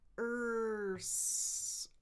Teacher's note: Then because it's a cluster, a consonant cluster, I need to think, okay, what's next? So I'm going to pull my tongue forward from the R to the bump and create some friction there.